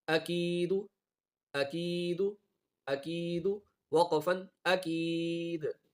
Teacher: کھینچ کے وقف ہوگا، دال پہ قلقلہ ہوگا